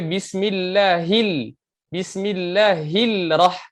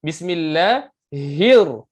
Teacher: Lam di situ, lam telah dimasukkan ke huruf ra. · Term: idgham syamsi